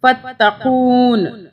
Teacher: اچھا، یہاں پہ ہم رک رہے ہیں، رکنے کی وجہ سے ہم نون زیر کو نہیں پڑھیں گے